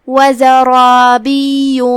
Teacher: کلمت وزرابی میں یہاں را پہ زبر ہے، را کا حکم ہے تفخیم، اور جو کہ اس کے بعد مد الف ہے، تو یہاں بھی ہم مد الف کو تفخیم سے ادا کریں گے، کیونکہ وہ اپنے پچھلے والے حرف کا حکم لیتا ہے، جو کہ یا پہ تشدید ہے، 2 حرف کے مقدار میں ہمیں یا کو ادا کرنا ہے.